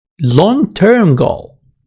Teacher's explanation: You are only stressing the long-term. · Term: adjective stress